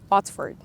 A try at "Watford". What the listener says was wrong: No S.